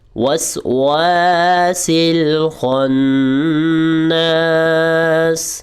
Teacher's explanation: واؤ کو ہم نے لمبا کرنا ہے، سیکنڈ والے واؤ کو، کیونکہ حروف مد آ گیا، الف سے پہلے زبر آ جائے تو وہاں پر ہم اس لفظ کو لمبا کرتے ہو۔